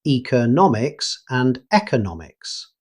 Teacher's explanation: The important thing is that the stress always falls on nom.